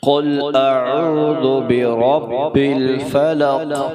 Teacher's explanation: اب قاف کو موٹا کر کے پڑھیں گے، قاف کو لام سے ملانا ہے، کیونکہ لام کے اوپر جزم آ گئی ہے، اس لیے ہم قاف کو لام سے ملا کر پڑھ رہے ہیں۔